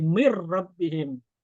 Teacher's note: Misal min ketemu rabbihim, nunnya hilang jadi mir rabbihim · Nunnya hilang, dilebur menjadi huruf yang setelahnya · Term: idgham